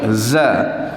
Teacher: dia jahar ni nyaring lah, tidak ada angin